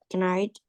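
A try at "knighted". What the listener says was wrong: night. We don't say the K. Night.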